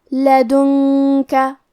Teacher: کلمت لدن کا میں یہاں نون ساکن ہے، پھر حرف الکاف ہے، کاف حروف الاخفاء میں سے ہے، تو ہم یہ حکم کو غنہ کے ساتھ ادا کریں گے